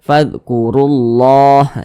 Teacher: maka lafaz Allahnya dibaca tebal dibaca Takim sehingga dibaca fkurullah jangan dibaca fkurullah ull jangan tapi ditebalkan fkurullah